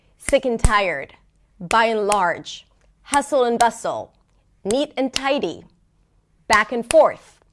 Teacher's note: Now, in terms of pronunciation, when we pronounce this pair, the interesting thing is that both words, both content words, the first and the second word are somewhat stressed while the word in the middle is totally reduced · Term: rhythm